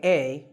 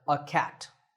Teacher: notice that in natural speech we don't say a we say uh